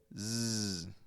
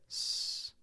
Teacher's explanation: when we put some voice you get Z